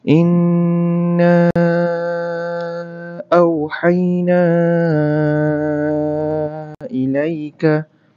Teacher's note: Mad jaiz mufasil. Yang nun sabdu tu adalah wajibul gunnah. So kena dengung 2 harakat pula tu. · Kali sekejap. Na tu wajib baca 4 atau 5 harakat tau